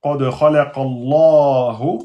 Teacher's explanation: on prononce de façon emphatique parce que le nom d'Allah est précédé par la fatha